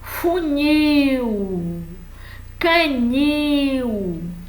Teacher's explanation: São oxítonas, a sílaba tônica é a última.